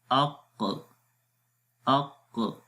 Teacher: آخر میں جب ہم آواز ریلیز کرتے ہیں تو قلقلہ کی آواز جنریٹ ہوتی ہے، اق ق، یہ قلقلہ ہے، اق اق۔